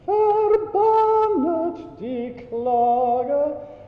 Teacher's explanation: So forget the first N of verbannet. Think about singing the vowels.